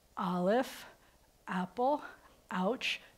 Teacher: if you say words like Aleph Apple ouch then you'll notice before you get to that vowel that starts those letters their throat has to close down and open up again it's called a glottal stop that's the sound that an Aleph